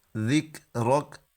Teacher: یہ جو کاف ہے اس کو ہلانا نہیں ہے، کیونکہ یہ حروف قلقلہ میں سے نہیں ہے۔